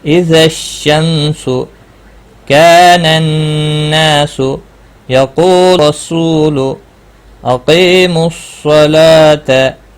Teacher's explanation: جب بھی حروف شمسی کا کوئی حرف آتا ہے تو ال کا لام نہیں پڑھا جاتا ہے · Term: ادغام شمسی